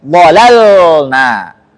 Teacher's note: Lam yang kedua harus jelas sukunnya. Enggak boleh ada tawallud.